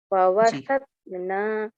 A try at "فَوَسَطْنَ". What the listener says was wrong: لمبا نہ کریں نون کو.